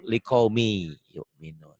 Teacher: hilang likaumi yu'minun bisa dikatakan idgham itu tulisan dan bacaan beda ditulisnya ada bunyi n-nya yang dibacanya n hilang melebur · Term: Idgham Bighunnah